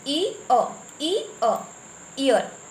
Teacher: ये दो pure vowel के मिलने से जो साउंड बनता है वो क्या कहलाता है, डिप्थोंग कहलाता है